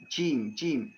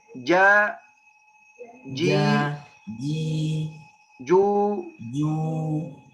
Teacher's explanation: Karena makhraj, tempat makhraj jim tengah lidah, bukan ujung lidah. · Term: harful jim